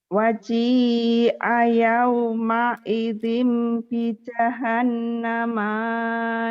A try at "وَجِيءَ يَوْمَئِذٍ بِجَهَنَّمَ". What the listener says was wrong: Pendek. Kenapa panjang?